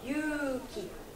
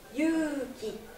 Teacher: Sauf que là, celui-ci, ça se prononce yu, u. Mais on ne prononce pas le deuxième u. Mais on allonge. Mais on compte un temps pareil. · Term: une voyelle longue